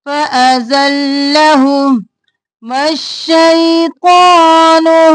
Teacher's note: میم کو زبر کے ساتھ شین کے ساتھ ملانا ہے، مش اور پھر شئی، شے نہیں کرنا، شین زبر یا شئی، شین دو بار مش اور شئی۔